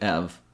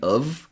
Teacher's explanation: It becomes a shorter version, almost like a schwa. Then have is not fully pronounced. We eliminate the H sound, so it sounds like ev, and sometimes even of